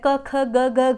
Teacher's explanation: जैसे क वर्ग है, क ख ग घ घ, ये कंठ्य वर्ण कहलाते हैं